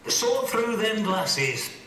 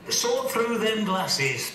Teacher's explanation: So he's got the northern, or Midlands and North version of the bath vowel.